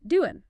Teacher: the G at the end of doing gets dropped, especially in informal American English, so it becomes doing.